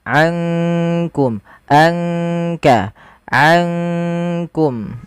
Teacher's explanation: Maka ankum langsung kepada makhraj disamarkan kepada makhraj kaf. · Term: ikhfa